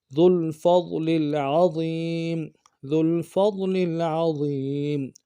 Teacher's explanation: فا کو ضاد کے ساتھ ملانا ہے، ضاد کو موٹا ادا کریں گے، لام کو اگلی لام کے ساتھ ملانا ہے، غنہ نہیں ہوگا لام پہ، عین کو موٹا ادا کریں گے، ضا کو یا کے ساتھ ملانا ہے موٹا کرتے ہوئے، یا مدہ کھینچیں گے بھی، میم کو نون سے ادا کریں گے۔